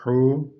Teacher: Bu he bu boğazın ortasından çıkıyor.